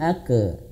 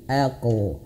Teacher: huruf qaf itu dia memiliki sifat qalqalah, dan ingat qalqalahnya itu harus tebal huruf qaf itu. Jangan ake tapi aqo.